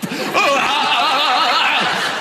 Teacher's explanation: He's communicating entirely through a glottal stop.